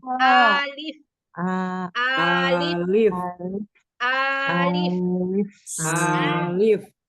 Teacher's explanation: ketika mengucapkan a lega enggak ada tertahan